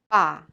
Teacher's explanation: But ba is tense without aspiration